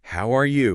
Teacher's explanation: But this time with a natural, friendly, rising intonation at the end, maybe with a slight peak on, how are you?